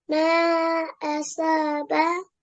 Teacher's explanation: So this sod is a thick sound. So we make a round mouth with a round mouth when we say it.